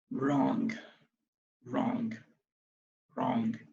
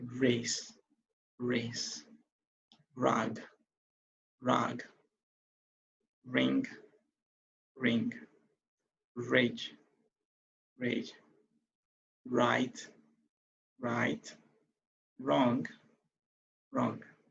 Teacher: You can see that the R sound is actually coming out instead of the W sound. All right, so the W is actually silent, and of course the R take the precedence. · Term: the W is silent